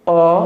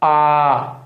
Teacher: आ ये दो मात्रा का समय है देखिए बोल के देखिए अ एक मात्रा का उसी के दुगना हम जब समय लेते हैं तो उसे क्या कहते हैं दीर्घ स्वर